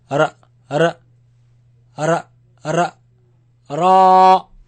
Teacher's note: it comes from the tip of the tongue touching the front palate roof